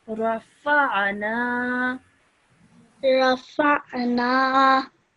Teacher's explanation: Try to make that ayn sound a bit more from deeper within your throat